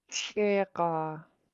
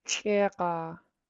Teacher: You have a pinched X, so you're gonna make a little friction using the back of your tongue